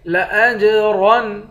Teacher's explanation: حمزے کو جیم سے ملا کر جیم پر قلقلہ کریں گے